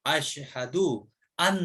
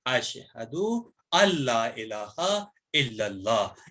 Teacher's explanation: اس نون کو سائلنٹ کر کے نون سے پہلے جو حمزہ ہے اس کو ہم لام سے ملائیں گے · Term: ادغام یرملون